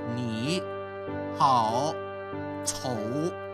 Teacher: The third tone, go down and up